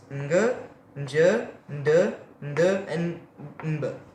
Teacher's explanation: You have to pronounce them through your nose. So they go in a way such as ng. So you add a slight n sound in front of each of these letters.